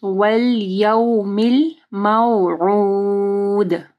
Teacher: عین کو واضح پڑھنا ہے، گلے کے درمیانی حصے سے دال کے اوپر کلکلا کرنا ہے۔